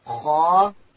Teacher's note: خا ادا کیږي د ستوني په سر کښې او خا چې د ډکه ویل کیږي